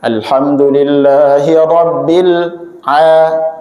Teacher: Huruf ain ya. Ya, huruf ain dibaca hamzah.